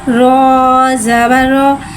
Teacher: ता 2 ज़बर तन, ज़कातन, ज़कातन, ज़कातन, ज़कातन। रॉ को एक अलिफ यानी 2 हरकत के बराबर खींच के पढ़ेंगे। रॉ के ऊपर ज़बर है, ज़बर को मुँह खोल के अदा करके पढ़ेंगे।